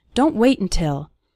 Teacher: We almost continue the word wait right into the N sound.